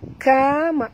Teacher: mimati bertemu kaf izhar syafawi tak boleh dengung